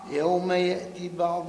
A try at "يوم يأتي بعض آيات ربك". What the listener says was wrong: لا، زيدها شوية في المد. يوم يأتي هكا بالمد.